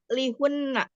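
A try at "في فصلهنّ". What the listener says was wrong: Hinna. Hi kasroh. Fi faslihinna.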